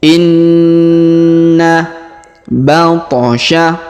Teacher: Artinya terdapat hukum tajwid yaitu ditahan dan tekan. Ya, bacanya ditahan dan ditekan 2 sampai 3 harokat